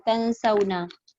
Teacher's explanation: Nun tu kalau kosong, dia dengung · Ada kan nun bertemu sin kan? Ada. Itu dibaca dengung. Sebab apa? Sebab nun tu kosong.